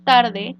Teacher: tarde, donde tar sería un acento prosódico por tener mayor fuerza de voz en la sílaba